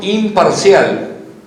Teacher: fenómeno que fonológico fonético y que espasa la escritura que es la n se transforma en m